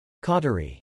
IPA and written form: ˈkɔ tə ri (Cautery)